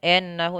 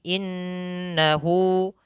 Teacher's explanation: Innahu, kesempurnakan kasrahnya jangan ennahu tapi innahu.